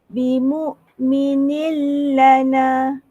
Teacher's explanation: Maksudnya kita tak dengar langsung bunyi en daripada nun tu.